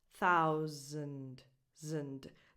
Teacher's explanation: And with this you start with a voiceless TH, like in the word think, and then you make an ow sound, like in the word out, and that S sounds more like a z